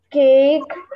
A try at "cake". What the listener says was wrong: молодец, cake, three.